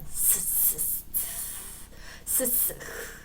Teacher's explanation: 마찰이 돼서 미세하게 공기가 빠르게 슉 마치 제트처럼 나온다.